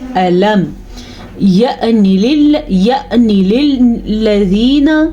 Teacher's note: حمزہ کے اوپر ساکن آنے کی وجہ سے حمزہ پہ جھٹکے کی کیفیت پیدا ہوگی۔ اگر کوئی اس کو یعنی للذین پڑھتے ہیں تو وہ غلط پڑھتے ہیں۔